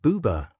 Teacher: when you say boo, your lips round out, your mouth opens up, and the sound vibrates low in your throat. It feels round and soft.